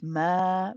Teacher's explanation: after prolonging the idgham for akmal ghunna, we also have an alif after the mim.